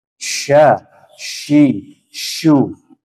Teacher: Nah, sedangkan so itu nanti tempatnya adalah di gigi seri bawah, ya kan? Nah, jadi tengah lidah bertemu dengan langit-langit atas, menyisakan celah yang sedikit. Nah, disinilah tempat udara itu mengalir. Sya, shi, shu. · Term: shin